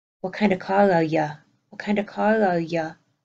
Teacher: My word you, shortening down to ya.